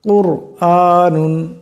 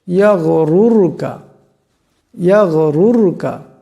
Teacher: কুর আনুন, কুর, এখানেও দেখেন রা সাকিন, তার ডাইনে পেশ আসছে, গতিকে এই রাকে মোটা আওয়াজে পড়তে হবে। এই রা সাকিনকে মোটা আওয়াজে উচ্চারণ করতে হবে, কুর আনুন এমন করে।